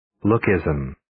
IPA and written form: ˈlu̇-ki-zəm (Lookism)